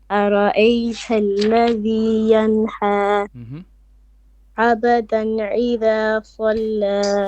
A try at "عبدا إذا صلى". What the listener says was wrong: This is alif, not ain. Okay, and qalqala, sukun, not abadan. Don't make fatha. So abdan idha salla.